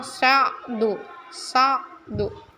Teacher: Bunyi, ya, seperti bunyi K dengan suara dari tenggorokan, bunyi A tapi seperti dari tenggorokan keluarnya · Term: ain